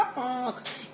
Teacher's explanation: इसका उच्चारण नाक और गले दोनों से इसकी आवाज निकलती है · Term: अनुनासिक